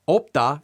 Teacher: you might hear the vowels o and uh pronounced in the same way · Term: simpler pronunciation